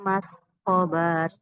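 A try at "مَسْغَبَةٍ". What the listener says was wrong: Mas gobah, nggak boleh dipanjangin. marbutoh di ujung mati jadi hak ya Bu. Mas gobah.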